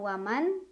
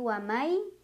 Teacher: Cara bacanya nun sukun dileburkan ke huruf ya sambil dengung. Jadi bukan waman tapi wamai sambil ditahan bunyinya. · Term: idgham bi gunnah